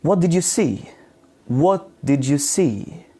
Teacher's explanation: your intonation falls at the end of the wh question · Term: falling intonation